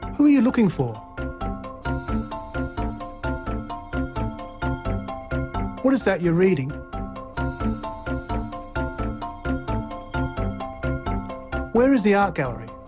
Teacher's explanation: So a falling tone is used for w and how questions.